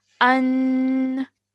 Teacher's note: it's the same sound as alif with a fatha, but we're adding a nasal sound at the end, which lasts for 2 seconds